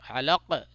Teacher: قلقلہ کریں گے. علق تھوڑا آواز کو لوٹائیں گے